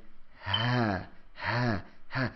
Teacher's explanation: from the lowest part of the throat is both the hamza and the ha. So the hamza, there's a little nudge right there if you press it.